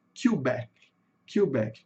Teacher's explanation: a sílaba tônica aqui no inglês tá no final, né? Quebec, Quebec, como a gente fala em português.